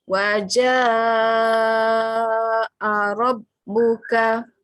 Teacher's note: Mat ada tanda panjang jumpa dengan hamzah dalam satu perkataan. Jadi kita baca dia kali ni dengan kadar 5 harakat. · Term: mat wajib